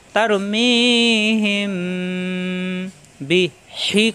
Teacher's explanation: وأرسل عليهم طيرا أبابيل ترميهم بحجارة من سجيل তারমি একালিপ টান হিম, মিম সাকিনের পরে বা আসার কারণে গুণ্য হবে। তারমিহিম, ঠোঁটের ভিজা অংশ থেকে গুণ্য হবে